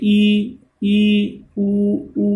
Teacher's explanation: इनका उच्चारण करते हैं तो मुंह पूरा बंद रहता है, इसलिए ये समर्थ कहलाते हैं